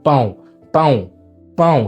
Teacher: Mais ensuite, on a le tilde sur le A. Et le tilde, c'est très important de bien le prononcer parce que ça a un son nasalisé